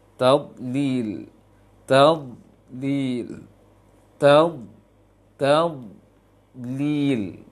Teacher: Naikkan lisan semua ke langit dari ujung sampai ke pangkalnya meninggi ke langit-langit. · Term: huruf dhad